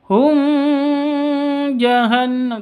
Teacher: [Musik] Jah wa panjang dua ketuk Hum nikmati bertemu dengan Jim cara bacanya jelas tanpa dengung Hum jahanam tidak boleh yang betul mawum jahanam Hum jahanam langsung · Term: Izhar Syafawi